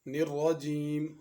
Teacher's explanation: را کو پر پڑھنا ہے، موٹا پڑھنا ہے، نرجیم را کو باریک پڑھنا درست نہیں